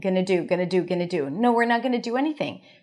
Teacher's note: So the answer is with a pitch going down.